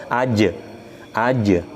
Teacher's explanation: suara memantul dan tidak ada suara Hamzah di belakang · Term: Qalqalah